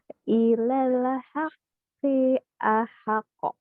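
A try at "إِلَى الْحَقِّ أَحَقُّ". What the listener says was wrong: Q-nya kepanjangan.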